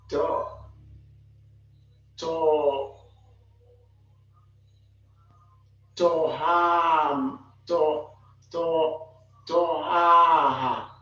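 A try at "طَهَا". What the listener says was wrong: To ha. I want to hear the last alif.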